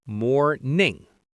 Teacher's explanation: Again, that strong American R sound more and the ning at the end. Make sure you get that ng sound at the back of your throat.